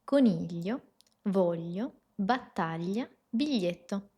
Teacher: Después el sonido es laterale. Eso significa que el aire pasa lateralmente. Palatale, contacto del dorso de la lengua con el paladar. · Eso significa que el aire pasa lateralmente. Palatale, contacto del dorso de la lengua con el paladar. Y por último es también sonora. Entonces las cuerdas vocales vibran.